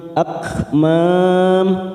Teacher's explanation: Huruf kaf ini memiliki sifat hamas, maka akmam. Mam mat arid disukun 4 harakat, kita samakan